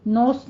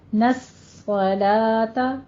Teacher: نوس نہیں کہنا، نون کو باریک رکھنا ہے، صاد کو پور پڑھنا ہے